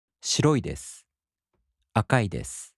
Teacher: In the polite form, the accent falls on the mora before i.